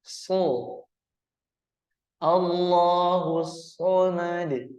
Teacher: posisi pangkal lidah itu ee sedikit terangkat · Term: huruf Shad